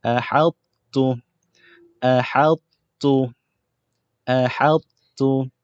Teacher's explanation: Huruf ta masuk ke dalam huruf ta secara tidak sempurna. Dia masuk sikit je. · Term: naqis